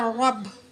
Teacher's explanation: را کو موٹی آواز میں پر کر کے پڑھیں گے